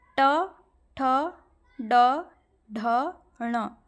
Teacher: ड ढ ण इनको बोलेंगे ना आप फील करेंगे कि जो आपका जीहा का जो नुकीला भाग है जो नोक है वह मुर्धा को छू रहा है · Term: मूर्धन्य